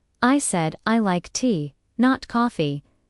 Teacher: The stress on tea shows the contrast. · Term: contrastive stress